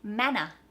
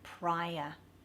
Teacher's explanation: in Australian English, if there's an R at the end of a word, we don't pronounce it and it becomes a schwa sound, which is just a ah.